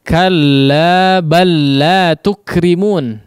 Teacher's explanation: Di situ juga dibaca dengan diidghamkan ya, yaitu dengan memasukkan huruf lam yang pertama kepada huruf lam yang kedua sehingga seolah menjadi bertanda tasydid ya. Huruf yang kedua bertanda tasydid dan huruf yang pertama seolah tidak dianggap.